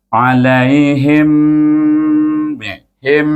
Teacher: nampak bibir kita rapat sebab huruf mim kemudian baru pergi ke Mina satu Kalimah lagi Mina tu satu